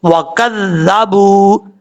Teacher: یہاں پر واو مدہ ہے، ایک الف کی مقدار لمبا کر کے پڑھا جائے گا۔ واو کو پڑھتے وقت ہونٹ گول کریں گے، کاف باریک ہے، اس کو پر پڑھنے کی ضرورت نہیں ہے